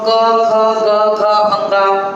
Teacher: कवर्ग के उच्चारण का स्थान है कंठ